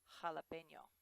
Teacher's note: the letter J in Spanish does sound like an H but it's actually a little bit harsher than we say it in English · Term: Spanish J